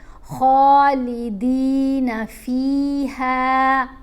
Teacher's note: فا کو بھی لمبا کیا، ہا کو بھی لمبا کیا، دونوں کے ساتھ حرف مدہ ہے، اضافی واول ہے، زیر کے ساتھ یا ساکن، زبر کے ساتھ الف، اس لیے لمبا پڑا۔